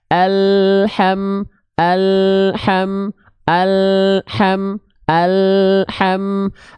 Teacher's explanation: ketika lidahnya turun huruf ha kecilnya langsung kita lafalkan kan itu enggak akan ada memantul dia